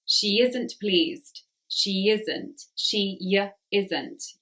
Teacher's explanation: You can hear in the middle there is a little y.